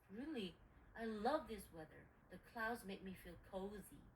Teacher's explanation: speaker B is going to stress love and cozy because speaker A thinks the weather is depressing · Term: opposing opinions are stressed